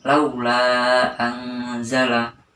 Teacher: Bacaannya sama seperti mad wajib muttasil, yaitu 3 alif atau 5-6 ketukan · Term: mad jaiz munfasil